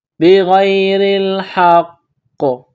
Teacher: ملانا ہے، بغیر الحق، ہا کو قاف کے ساتھ ملانا ہے، قاف مشدد ہے تو قاف کو موٹا پڑھنا ہے